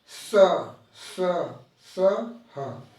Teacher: इनका उच्चारण करने में संघर्ष होता है, जैसे हवा रगड़ के आती है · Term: संघर्षी व्यंजन